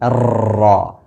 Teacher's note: huruf ro tasdid berharakat fathah maka ditafkhimkan dibaca dengan tebal hati-hati getarannya jangan sampai berlebih